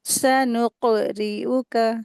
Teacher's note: सनुक, काफ के ऊपर सुकून लगी हुई है तो यहाँ पर कलकला का रूल अप्लाई करेंगे। और फिर रा के नीचे जेर लगी है, रा को बारीक करके अदा करेंगे।